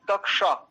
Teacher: ये जो कक्षा आप बोल रहे हो ना, बिल्कुल वहां पर शुद्ध बोल रहे हो इस मूर्धन्य शकार को